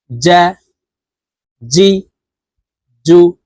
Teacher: জিম হরফের উচ্চারণ জিহ্বার মধ্যখান থেকে পড়বো